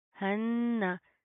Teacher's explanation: हा नून जबर हन, नून जबर ना, हन्ना, नून के ऊपर शद है, गुन्ना करेंगे, ना के अंदर साउंड पैदा करेंगे